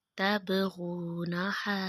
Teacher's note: غو کو تھوڑا کھینچیں گے کیونکہ واؤ پہ جزم ہے اور پچھلے حرف کے اوپر پیش ہے۔ یہ واؤ کی مثال حروف مدہ ہے، ایک الف کی مقدار کے برابر لمبا کریں گے۔